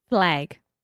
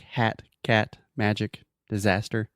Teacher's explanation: It's a very open and front sound.